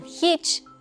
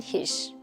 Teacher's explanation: Wrapping up our list is Kıbrıs ağzı, or should I say Kıbrıs. This dialect is easily recognizable by b's that turn into p's and ç's that turn into ş, just like the difference between Kıbrıs and Kıbrıs, and hiç and hiş.